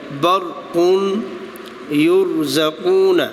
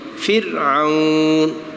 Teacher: اس سے پہلے والا حرف زبر اور پیش ہے تو پر پڑھا جائے گا برقون یرزقون، اور زیر ہے یعنی کہ را ساکن سے پہلے زیر ہے تو باریک